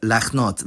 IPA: laχˈnɔt